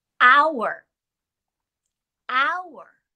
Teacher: i hear an o w sound i don't hear the h the h is a consonant but it is a silent consonant